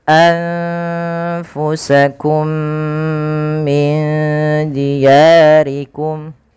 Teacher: Pada lafal anfusakum, bacaan anfusakum di sini ada huruf nun yang ia tidak berharokat, maka kita hukumi dengan nun sukun. Kemudian bertemu setelahnya huruf fa, maka suara nunnya disamarkan kepada huruf fa